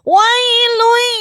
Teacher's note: Jadi harus masuk ke rongga hidung. Dengungnya harus masuk ke rongga hidung, harus khaysyum.